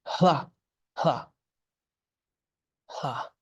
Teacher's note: when you hear that the Tibetans speak, it sounds more like the aspiration is coming before, like hla, hla, hla. · It's almost like the H, the aspiration comes before the la.